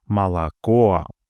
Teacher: In молоко, the third O is stressed and thus fully pronounced